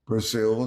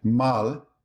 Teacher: Brazilian Portuguese often vocalizes final L. Brazil sounds like Brazil. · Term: final L vocalization